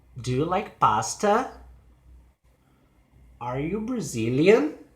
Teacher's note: yes or no questions they have a rising intonation